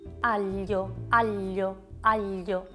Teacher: palato rigido invece che così un po' più schiacciata e quindi è come se io premessi le due la doppia l al palato duro aglio aglio aglio in questo caso qui ho fatto una doppia